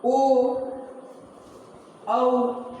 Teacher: दूसरा है दीर्घई, दीर्घऊ। ओ, औ, ये सब जो हैं दीर्घ स्वर के उदाहरण हैं, क्योंकि इसमें दो मात्रा, इसके उच्चारण में दो मात्रा का समय लग रहा है।